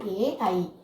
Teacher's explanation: തൊണ്ടയും അണ്ണാക്കും കൂടെ ചേർന്ന് ആണ് ഈ രണ്ടക്ഷരങ്ങൾ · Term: കണ്ഠ താലു